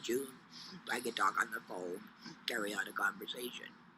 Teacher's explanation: the esophagus and the vibration allows this to move and so the speech is produced through the vibration of the esophagus rather than the vibration of vocal cords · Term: esophageal speech